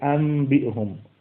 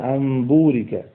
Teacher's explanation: নুন সাকিনের পরে বা আসলে ওটাকে মিম দ্বারা পরিবর্তন করতে হয় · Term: ইখলাব